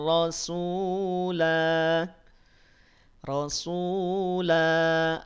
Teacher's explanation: Rasulah, la-nya dipanjangkan 2 harokat.